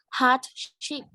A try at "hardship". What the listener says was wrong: Well done. Nicely pronounced. Thank you.